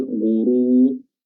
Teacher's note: rohnya yang pertama tafkhim tebal, ghuru, dan yang kedua tebal juga ya.